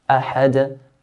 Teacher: The word ahad ends with a dal. And dal is one of the 5 letters of qalqala, so we make an echo sound.